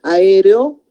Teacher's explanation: se están partiendo las vocales fuertes. A es una sílaba, E es otra sílaba. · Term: hiato